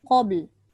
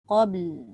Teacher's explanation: Qaf tebal. Bukan ka.